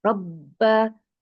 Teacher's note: makhorijul huruf ba adalah dari kedua bibir yang dirapatkan hati-hati ketika merapatkan bibir jangan sampai melipat ya bibirnya jangan · huruf ro berbaris fathah maka dibaca tebal dibaca tebal kemudian huruf b-nya bertasjid maka ditekan rabba hati-hati huruf